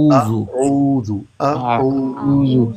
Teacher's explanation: اگر ہونٹوں کو گول کریں گے نہیں تو اوزو ہو جائے گا، اوزو وہ غلط ہے